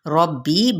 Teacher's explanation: ربی راپور پڑھا جائے گا کیونکہ اس کے اوپر زبر یعنی فتحہ ہے، ربی با کے ساتھ اسے ملاتے ہوئے دبا کے ساتھ ادا کریں گے، اور بی پہ یا مدہ یعنی مد اصلی بالالف کا قاعدہ ہو رہا ہے، جس کو ایک الف یا دو حرکات کے برابر کھینچیں گے۔